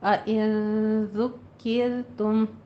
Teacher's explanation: تشدید ہے، دو بار ادا کریں اس کو، اور کیر میں یہ را جو ہے یہ باریک پڑھی جائے گی کیونکہ اس سے پہلے کسر آ رہی ہے